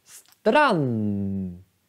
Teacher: A-et är faktiskt kort. Men om ni lyssnar. Strand. Det är N-et. N-et är långt. Men vi skriver bara ett N. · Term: långt N